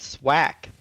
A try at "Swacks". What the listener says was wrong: Swacks. I didn't hear the X sound. It sounded like a K, and I was like, I don't know who Swack is. But yeah, Swacks.